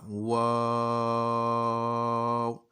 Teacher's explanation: वाव को हमने होंठों से अदा करना है, होंठों को गोल करके